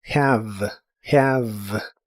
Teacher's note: La h se pronuncia como una j suave y la e del final es muda, lo cual es muy común en inglés. La palabra termina con el sonido de la V, que es labiodental y vibrante en inglés, y la haces como mordiendo ligeramente tu labio.